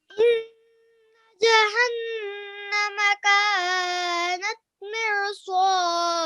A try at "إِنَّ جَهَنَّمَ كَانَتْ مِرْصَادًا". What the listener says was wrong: Just the first letter. Let's stress on the nun mushaddad because it has a tashdid, right?